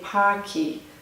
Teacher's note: So for example, the word park ends with a K, and this is consonant sound. So some Brazilian speakers might say parque and put a vowel sound in at the end to make it easier to say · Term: add a vowel sound